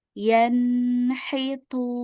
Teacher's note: Ya, di huruf nun-nunnya ini pasti dengung.